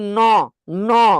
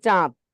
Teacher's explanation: নাক দিয়ে বলতেছি, এটাকে বলে আনুনাসিক, মানে অর্ধেক নাসিক্য